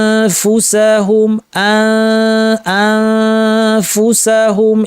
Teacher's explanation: উপর পাটি দাঁতের শীর্ষ নিচের ঠোঁটে লাগিয়ে ফা উচ্চারণ হয়। তাহলে ঠোঁটের উপরে হালকা করে নিয়ে আসবেন, ফুল প্রেশার দিবেন না এবং নাক থেকে গুন্না করবেন। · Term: ফায়ের ইখফা